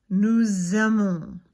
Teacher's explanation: We add the Z sound so that it flows nicer, okay? And we do that anytime the verb starts with a vowel, all right? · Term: liaison